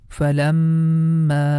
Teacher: Falam, and the next syllable is ma, and the ma we have to make it long at least for 3 count because there is a mud sign top of that